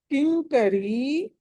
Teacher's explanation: కి తర్వాత అనుస్వారం ఉంది తర్వాత క ఉంది కాబట్టి పంచమాక్షరం అనాలి